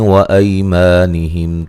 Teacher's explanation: میم ساکن کا اظہار ہے، غنہ نہیں کریں گے